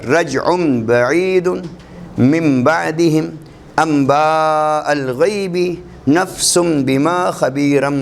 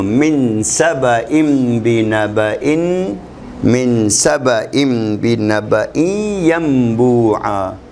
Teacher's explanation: با سے پہلے چونکہ تنوین کا نون یا کسی لفظ کا نون آ گیا ساکن تو یہ میم پڑھا جائے گا